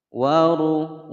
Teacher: ra berharokat dhammah dibaca tebal